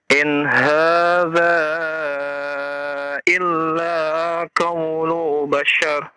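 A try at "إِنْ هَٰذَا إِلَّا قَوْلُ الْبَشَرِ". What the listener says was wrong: Ada lam sukun di sana ya. Dibaca. Ulang lagi.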